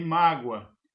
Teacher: O O aqui ele está funcionando como uma semivogal. Então o o O tem como um som de U e funciona como uma semivogal.